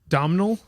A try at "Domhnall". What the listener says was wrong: Donald. that's how you say it in British. Donald. in British English, you don't say the M.